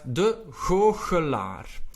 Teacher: my G's and CH sounds are a little bit softer. That is because I am Belgian and I am Flemish.